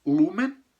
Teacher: Uma vogal longa na primeira sílaba, acento tônico, marca tônica de novo na primeira sílaba